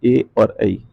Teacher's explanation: ए और ऐ, जो कंठ और तालु से बोले जाते हैं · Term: कंठ तालव्य